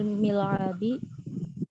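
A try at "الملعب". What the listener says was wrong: Bukan mi. Mal'ab. mal'abi.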